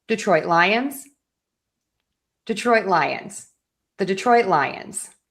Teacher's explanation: Now, when we put those two together, we're going to stress lions more. I still have my stress on the syllables, but I'm going to focus more on the word Lions. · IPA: /dɪˈtrɔɪt ˈlaɪənz/